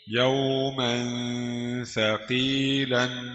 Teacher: ميم تنوين بالفتح مخفى عند الثاء المفتوحة بغن حركتين